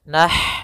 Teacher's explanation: Kemudian ma ada mad tabi'i, innama di sini ada huruf ha sukun, yaitu ha yang memiliki sifat hamas, maka alirkan dulu nafasnya